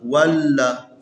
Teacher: واو اور لام کے درمیان جو الف ہے اس کو نہیں پڑھنا ہے، ہم نے واو کو لام کے ساتھ ملانا ہے